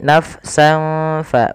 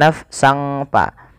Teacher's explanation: Ada huruf sin berharakat fathatain bertemu dengan fa. Maka suara sinnya ini, suara tanwinnya dimasukkan ke huruf fa. Awalnya nafsan, karena bertemu dengan fa disamarkan surat tanwinnya, dan inilah yang kita namakan dengan bacaan ikhfa.